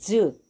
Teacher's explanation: जब ज बोलते हैं ज तो पूरी जीभ जो है तालु के साथ टच करती है। अब ज बोलेंगे ज तो हल्की सी हमारी ये जीभ तालु के साथ टच होते होते रहेगी।